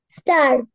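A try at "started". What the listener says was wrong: স্টার্টেড। দেখো ইডি আছে লাস্টে, স্টার্টেড।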